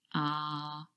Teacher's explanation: really produced right at the back of your mouth ah and your mouth is wide open and the tongue is really low · that sound is really produced right at the back of your mouth